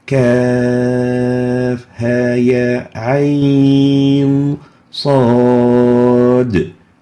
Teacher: There's no merging between the kaf and the ha. There's no merging between the ain and the sad. We pronounce it as Kaf Ha Ya Ain Sad. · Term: compulsory elongation mad